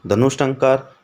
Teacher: अब ट ठ और श मूर्धन्य वर्ण आ गए तो विसर्ग का भी मूर्धन्य श बन जाएगा